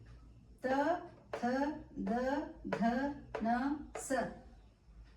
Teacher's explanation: ವರ್ಣಗಳು ತ ಥ ದ ಧ ನ ಸ ಇವುಗಳಿಗೆ ದಂತೆ ವರ್ಣಗಳು ಎನ್ನಲಾಗುತ್ತದೆ ಈ ಅಕ್ಷರಗಳು ಮೇಲ್ದಂತದ ಹಿಂಭಾಗಕ್ಕೆ ಸ್ವಲ್ಪ ಉಬ್ಬಿ ವಸಡಿನ ಭಾಗಕ್ಕೆ ಜೀವಾಗ್ರ ಸ್ಪರ್ಶಿಸಿ ಉಂಟುಮಾಡುತ್ತದೆ ಇವುಗಳಿಗೆ ವರ್ಷ ಧ್ವನಿ ಗಳೆಂದು ಸಹ ಕರೆಯಲಾಗುತ್ತದೆ ಇದು ದಂತ್ಯ ವರ್ಣಗಳ ಒಂದು ಉದಾಹರಣೆ